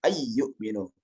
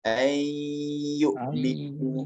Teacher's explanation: Kita akan menghilangkan nunnya dan kita mentasdidkan iya-nya.